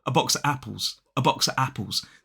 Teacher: if I say box of apples without the V sound it sounds a little bit awkward